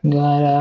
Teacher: You hear those flap t's? There are two of them. And then I'm going to link them over with that vowel sound.